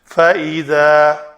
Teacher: ذال کا مخرج نوک لسان دونوں دانتوں کے درمیان آئے